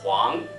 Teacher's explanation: So each Chinese pinyin is like one sound. So you try to make it condensed and smooth, as if there is no gap between wu and ang at all. So this one should be Huang.